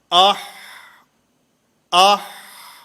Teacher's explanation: آہ، اب آپ حضرات اس کی مشق کریں، میرے ساتھ ساتھ آپ اس کو پڑھیں گے، آپ کو محسوس ہوگا کہ حلق کے درمیان سے یہ آواز نکل رہی ہے، اور جب آواز بند ہوتی ہے تو اسی حلق کے درمیان میں بند ہوتی ہے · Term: وسط حلق